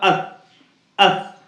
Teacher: زبان کی نوک اور اوپر کے سامنے کے دونوں دانتوں پر لگ کر ادا ہوگا. جیسے آپ کا تا ادا ہو رہا تھا ویسے ہی یہ سا ادا ہوگا, اس.